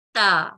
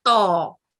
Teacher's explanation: اسی طرح تا اور تو, ان دونوں میں فرق کرنا بہت ضروری ہے. تا حروف ترکیک ہے اور یہ باریک ادا ہوتا ہے, اور تو حروف تفخیم ہے اور یہ بھاری اور موٹی آواز میں ادا ہوتا ہے, اور ان دونوں کے مخارج مختلف ہیں.